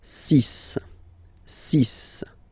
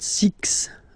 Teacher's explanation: even if it's ending with this x well you'll have to pronounce it like s